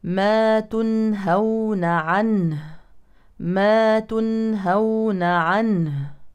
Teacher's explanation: الهاء متحركه بالضم فان وقفنا عليها تكون ساكنه يعني فيها همس ورخاوه اما النون الساكنه فيها توسط اذا نهتم اولا بتوسط النون ثم · نهتم اولا بتوسط النون ثم نبين همس ورخاوه الهاء